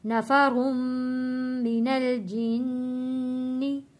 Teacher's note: रॉ यहाँ पे मोटा पढ़ेंगे, रॉ के ऊपर 2 पेश है यानी तनवीन है, हमने मीम के साथ जोड़ना है। तशदीद वाला मीम है, यहाँ पे हम गुन्ना भी अदा करेंगे।